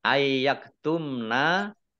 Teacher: Ayyaktumna nun sukun bertemu dengan huruf ya, bacaan idgham bi gunnah, yaitu masuk dengan mendengung ya, nunnya tidak dibaca, langsung masuk ke huruf ya